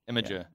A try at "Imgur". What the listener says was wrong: You're putting an A in it. Imagine. It's actually Im.